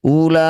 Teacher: Jadilah bacaan namanya mad wajib muttasil. La yang bertanda layar panjangkan 6 harokat atau 6 ketukan.